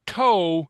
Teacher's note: In English, if you say toe, it's at the ridge of the palate.